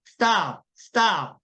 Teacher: T 발음 위치에서 S를 발음하셔야 돼요. 그러니까 이미 입 모양은 T로 답에 가 있으셔야 되고 그 상태에서 S 발음을 하시는 거예요.